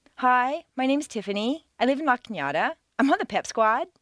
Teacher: not every American uses the downward staircase a certain segment of the population uses rising staircases